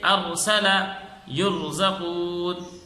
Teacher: را کو موٹا کرنے کا دوسرا قاعدہ، را ساکن ہو ما قبل زبر یا پیش ہو تو تب بھی را کو موٹا کر کے پڑھیں گے، جیسے ارسل یرزقون۔